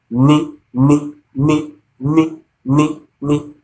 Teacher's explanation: ni is an alveolar sound.